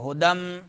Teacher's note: تنوین کے بعد جو ہے میم آ رہا ہے ادغام ہوگا